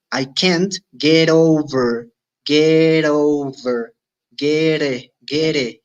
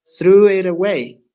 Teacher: La T flap o la flap T es un sonido muy cercano a la R del español, especialmente del español mexicano, porque en La Paz tenemos diferentes tipos de español, que es un sonido R, como en entrar.